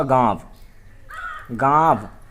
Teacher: इसका उच्चारण नाक से कम, मुख से अधिक होता है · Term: चंद्र बिंदु